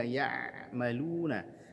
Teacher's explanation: ainnya punya sifat tawassud, di antaranya alirkan sedikit bunyinya